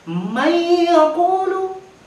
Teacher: Tulisannya man yaqulu, dibaca dengan dengung. Jadi man yaqulu, huruf nun matinya kita leburkan. Man yaqulu, setelah kita leburkan, kita masukkan huruf idgham bi gunnah.